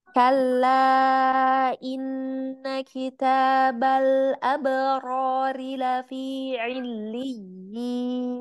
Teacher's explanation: Kitabal, huruf lamnya terhampar ringan ya, jangan menggulung